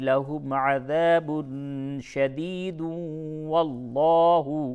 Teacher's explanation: تنوین کے بعد واو ہے، ادغام مع الغنہ ہوگا